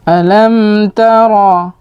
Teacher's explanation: atau tidak boleh kita dengungkan eh terlalu lama karena memang kalau huruf mim itu ada sifat dengungnya tapi tidak pada bertemu dengan huruf ta disini termasuk pada izhar syafawi